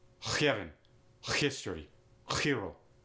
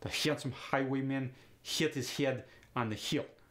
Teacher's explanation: it's the h kind of a throaty sound the tongue goes back up into the soft palate you want to get like that clearing your throat to spit